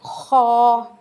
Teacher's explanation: खा की जो हमने आवाज़ निकाली है वो मोटी करके निकालनी है अपने गले के अंदर से। खा, उसके बाद है दाल।